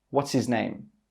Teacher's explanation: He joins the what's and the his together, but he doesn't say that h sound.